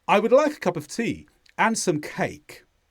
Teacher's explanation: at the end of each sentence, I go down with my voice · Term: intonation